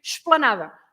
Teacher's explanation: sometimes you can hardly listen to the ish and you say esplanada